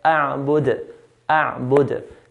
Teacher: Dal at the end, because it's a full sukun, we make a qalqala.